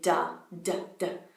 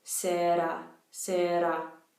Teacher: you'll think that you're saying a D, but everyone else is actually interpreting that as an R